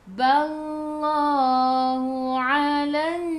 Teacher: Lam tak ada sukun selepasnya ada sabdu. Terus tekan ke dalam nun dan dengung 2 harakat. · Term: Wajibul gunnah